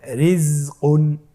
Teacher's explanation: তাহলে প্রথম রয়ে এখানে রয়ের নিচে জের রয়েছে, এই রটাকেও আমাদেরকে পাতলা করে পড়তে হবে।